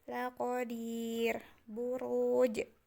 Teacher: Ada ya mati ketemu dengan ro, maka laqadir, dirnya itu menjadi panjang 2-5 harokat. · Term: mad arid li sukun